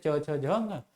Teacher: च्वर्ग ध्वनियों का उच्चारण स्थान तालु होता है। च्वर्ग के वर्ण जैसे च, छ, झ, ये तालु से बोले जाते हैं।